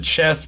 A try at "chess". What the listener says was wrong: Oh, I thought you said chest. You're saying chess.